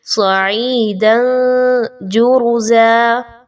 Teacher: وَإِنَّا لَجَاعِلُونَ مَا عَلَيْهَا صَعِيدًا جُرُزًا، یہاں پہ صعیداً دن جرزا، صعیداً جرزا، اس حرف کے اوپر توجہ دیں، ایک تو صاد کا مخرج، عین کا مخرج، اور پھر دال کی دو زبر کی تنوین کے بعد جیم کا حرف آ جانا، تو یہاں پہ اخفا کیجئے